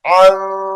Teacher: میم مشدد کی وجہ سے غنہ ہوگا اس الفاظ پر